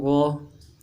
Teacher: غ موٹا کر کے جماؤں کے ساتھ ادا کریں گے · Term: حروف حلقی